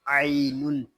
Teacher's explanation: عین یا زبر عی، نون دو پیش نون، عینن، عین پہ یہاں یا لین ہو رہا ہے اور تنوین پہ ہو رہا ہے اخفا۔